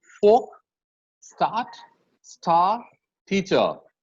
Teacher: In English, that is the British English and the Australian English, the R remains silent in most words.